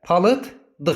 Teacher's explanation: Ldan əvvəl də D olduğu üçün l da d-ya çevriləcək. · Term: L d-ya çevrildi